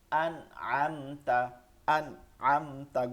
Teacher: গুন্না মানে ধরে রাখা, কোনোভাবে ধরে রাখবেন না, ঠিক আছে, পড়ে যাবেন দ্রুত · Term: গুন্না ছাড়া